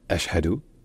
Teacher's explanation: coup de glotte au début, puis un ch et un h qui se suivent.